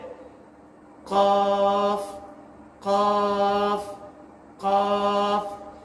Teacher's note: जुबान की जड़ और नरम तालू के लगने से कॉफ अदा होता है